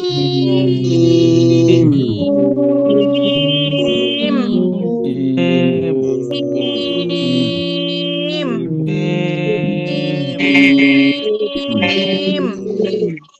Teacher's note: দুই ঠোঁটের শুকনো জায়গা থেকে মিম